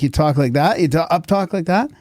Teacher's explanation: Is up-talking like when you end on when you end on a high note, like you talk like that, you up-talk like that? Every time you send a sentence, it ends on a high note.